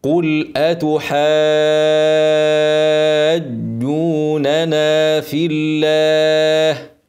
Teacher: اعملها قل اتحاجوننا في الله كمان مره قل اتحاجوننا في الله بشدد الجيم واضمها افتح بقى النونين ننا واحافظ على المد الطبيعي